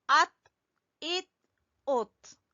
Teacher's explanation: अब ता के ऊपर कलकला नहीं करना।